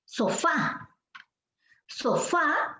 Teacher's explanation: son precisamente las últimas sílabas las que tienen la mayor fuerza de voz. Por eso esas palabras se les llama agudas.